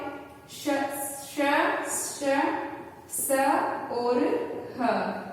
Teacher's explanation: ऊष्म व्यंजन हमारे कौन से होते हैं, जिनको बोलते समय हमारे मुख से गर्म हवा निकलती है